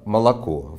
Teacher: в нем три буквы о но только последнее произносится именно как О а первая и вторая буква вы произносится иначе но не скорее